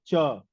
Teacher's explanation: So there is some sparsha inside your mouth, uh, so that this sound like Ka is coming, and then the Cha. So there is a sparsha between the tongue and the palate.